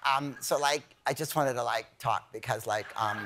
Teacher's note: it's always some young lady with a vocal fry